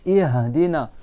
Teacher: Ça, c'est mieux de la gorge. Le ha, il est en bas de la gorge. Ihdina. Tu dois tout ouvrir.